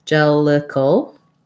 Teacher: we have a syllabic L at the end. So not cal, no a there, just going right from the K to the L, maybe a tiny little schwa in between.